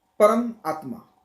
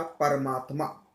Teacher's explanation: उदाहरण के तौर पे परम आत्मा, तो परम का अ और आत्मा का आ, तो आ हो गया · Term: स्वर संधि